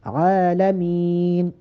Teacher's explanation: عالمین عین پہ کھڑا زبر، اس کو لمبا کریں گے اور وقف کرتے ہوئے میم کو بھی تھوڑا لمبا کریں گے تاکہ وقف میں خوبصورتی پیدا ہو